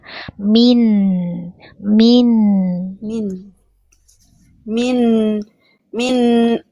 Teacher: Jangan dipantulkan nun sukunya